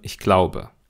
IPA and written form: ɪçˈg̥laʊ̯bə (ich glaube)